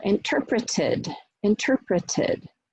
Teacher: So if you have a verb that ends in d or t, the final ed is actually going to have the schwa in it and be an additional syllable. So then you actually get the ud sound.